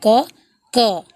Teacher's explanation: कंठ के पीछे भाग और जिह्वा की मदद से यह होता है। जीभ को थोड़ा टेढ़ा करके यह कहना पड़ता है क, क। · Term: नुक्ता